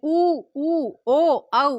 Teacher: जो हमारे होठ हैं वो गोल आकृति ले ले या गोलाकार हो जाते हैं उच्चारण के टाइम पे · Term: व्रतमुखी